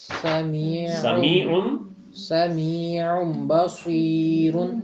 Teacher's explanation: تو تنوین وہی آپ نے فارمولا جہاں نون آئے گا وہاں آپ نے اس کے اوپر اس کے فوراً بعد اگر بے آ رہا ہو تو آپ نے اس کو نون کی آواز کو ختم کر کے تو آگے بے کے ساتھ مل جانا ہے